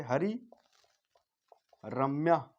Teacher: विसर्ग का जब लोप करेंगे तो ये आपका दीर्घ हो जाएगा, दीर्घोणा, ठीक है।